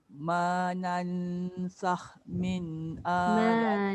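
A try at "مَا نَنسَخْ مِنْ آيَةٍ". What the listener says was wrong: Manansakh. Satu, nun tu jangan letak lidah tu dekat langit. Tak boleh. Nanti dia jadi nan, dia jadi izhar. Nan, dia gantung. Nan, lepas tu kha tu tebal. Sakh min. Dengan sakh. Sakh.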